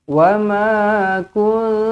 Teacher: ma dibaca dengan panjangnya dua harakat di sini.